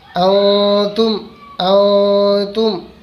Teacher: ٹھیک اسی طرح سے ہمیں اس کو اکفا کر کے پڑھنا ہے۔ اکفا مطلب آدھی آواز ناک میں اور آدھی آواز حلق میں